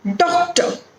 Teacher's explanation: Here the syllable that is stressed is do.